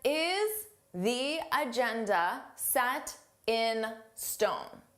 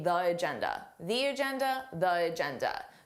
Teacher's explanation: Notice how I have that long E sound, the agenda, because agenda starts with a vowel. This is not a rule that native speakers always follow.